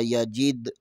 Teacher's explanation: دال ساکن ہے یہاں پر کلکلا ہوگا